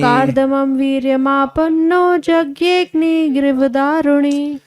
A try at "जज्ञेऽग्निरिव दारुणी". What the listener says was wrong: गिरी नहीं हो, जज्ञेऽग्निरिव दारुणी। कार्दमं वीर्यमापन्नो जज्ञेऽग्निरिव दारुणी, कार्दमं वीर्यमापन्नो जज्ञेऽग्निरिव दारुणी।